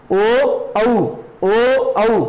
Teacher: उसके बाद में हो गया कंठोष्ठी, कंठ और ओष्ठ, ओ औ, तो मतलब ओठ भी आपस में टकरा गए और कंठ से भी ध्वनि का उच्चारण हो गया।